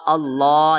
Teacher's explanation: اللہ لام کو لمبا کرنا ہے کیونکہ اوپر کھڑا زبر ہے